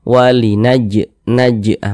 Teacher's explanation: ini termasuk kepada Qalqalah kecil Qalqalah Sugra karena dia berada di tengah kalimat